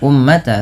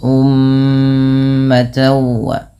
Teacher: mim berharakat tasydid ini ditahan dulu bunyi suara mnya sepanjang dua harakat · ini ditahan dulu bunyi suara nya sepanjang 2 harakat karena terdapat hukum tajwid berupa bacaan gunnah. Maka jangan hanya sekadar ummata, tapi ditahan dulu ummatawa. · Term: ghunah